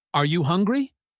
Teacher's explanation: when we ask a yes or no question like are you hungry our voice might go up at the end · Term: intonation